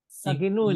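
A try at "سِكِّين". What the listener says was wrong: Sikinun. Itu sikin bukan sakin.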